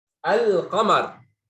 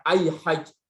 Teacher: Jadi lamnya jelas, enggak diidghamkan lamnya. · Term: lam qamariyah